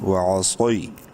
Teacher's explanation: صاد کو منہ بھر کے پڑھنا ہے لیکن شارٹ کرنا ہے، یا لین ہے